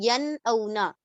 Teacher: ین اونا میں نون پوری طرح سے ظاہر ہو رہا ہے، نون کی آواز ظاہر ہو رہی ہے